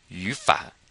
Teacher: And because it's 2 third tones, this one becomes a second tone.